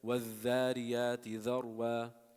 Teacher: Some of these letters, for example, dhal. If you hold dhal, you can hear it. There's sound, but there's no air.